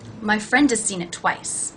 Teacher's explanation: The word has is pronounced without the H, and again the vowel sound is reduced to the schwa.